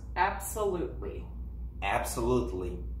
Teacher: So the letter T, you do not pronounce.